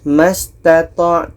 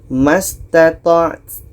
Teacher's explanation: Ta mati ini hamas, ada anginnya.